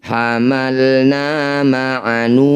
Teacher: Mad tabi'i bertemu huruf hidup kemudian dihentikan disebut bacaan mad arid disukun. Cara bacanya nu panjangkan 6 harokat, huruf terakhir sukunkan.